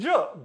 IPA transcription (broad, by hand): dʒ